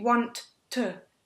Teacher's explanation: your tongue has to touch your alveolar ridge just behind your teeth to make the t two times